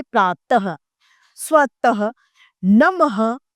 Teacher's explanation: विसर्ग इसके उच्चारण में ह का उच्चारण किया जाता है।